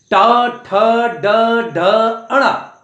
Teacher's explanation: टा वर्ग मूर्धा, आपकी जुबान मुड़ जाती है, इसमें तालु में जाके मुड़ जाएगी और वहां से आप टा इस वर्ण को पूरा बोलेंगे।